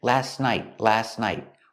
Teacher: We don't say last night. When you link the words, you don't hear the T. · the T in last is silent. You don't hear it. Last night.